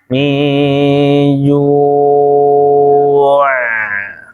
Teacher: Antum kalau mau wakaf di ain itu kan dia tipis plus ngalir